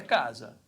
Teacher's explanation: é casa com a sílaba tônica é a penúltima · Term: paroxítona